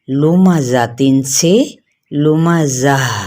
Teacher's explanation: اسے وقف کی صورت میں ہائے ساکنہ سے بدل کر وقف کریں گے